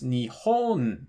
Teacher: Nihon has the accent on the ii mora which is also the second-to-last mara so it's Nihon this but